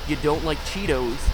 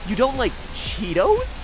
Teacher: without changing any words I can say the exact same sentence and move the pitch upward at the end to make it a question · you don't like Cheetos that kind of flat even tone